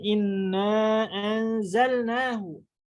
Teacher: Mad munfasil dibaca ya oleh kita riwayat Hafs an Asim, Thariq Imam Syatibi itu 4 atau 5 juga sama seperti mad muttasil.